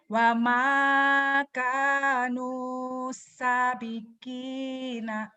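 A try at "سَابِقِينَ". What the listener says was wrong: Sanya panjang. Ya lagi. Dihentikan. Jadi batu beralih disukun.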